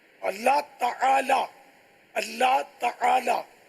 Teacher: تعالی عین حلق سے نکالنا ہوگا